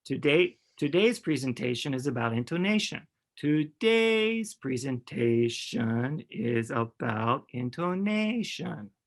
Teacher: you can hear how my voice is going up and down i'm hitting these points at the stress words and everything else between there is kind of being interpolated right